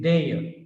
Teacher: We generally say there, but the ending r is not pronounced, so therefore it is there.